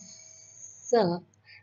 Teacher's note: S is a sound which comes from the front part of the tongue and it touches your alveolar ridge. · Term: voiceless sound